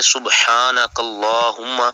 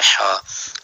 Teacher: ہا والا، جو حلق کے درمیان والے حصے سے ادا ہوتا ہے ہا۔ اگر ہم دو آنکھوں والا ہا پڑھیں گے سبحانک اللہم، جیسے لوگ پڑھتے ہیں اکثریت میں، اب سبحانہ تو یہ تو لفظ ہی بدل گیا، تو ہم نے پڑھنا سبحانک اللہ، کاف کو لام کے ساتھ جب ملانا ہے تو لام کو پھر پور کرنا ہے، سبحانک اللہم۔